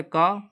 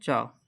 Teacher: कंठ से का और तालु से चा, तालु से बोले जाते हैं